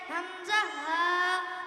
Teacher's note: 1 নম্বর মাখরাজ হলকে শুরু হইতে হামজা হা